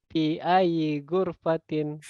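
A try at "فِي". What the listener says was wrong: Fi ya, jangan pi. Fi ya.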